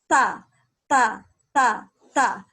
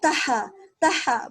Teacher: Ujung lidah bertemu gusi gigi seri atas. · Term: huruf ta